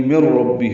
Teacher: نون ساکن ہے اور اس کے بعد را آیا ہے، ادغام کر دیں گے. یہ ادغام کامل ہو جائے گا، نون کی آواز ختم ہو جائے گی